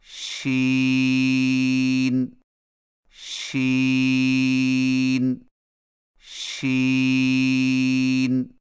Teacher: شین کی ادائیگی میں زبان کے درمیان کو تالو کی طرف بلند کرتے ہوئے باریک اور پھیلتی ہوئی آواز میں پڑھیں